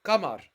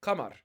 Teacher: a lower back vowel